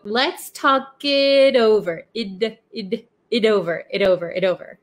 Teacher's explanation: notice that the T in it becomes a flap T because it is sandwiched in between two vowels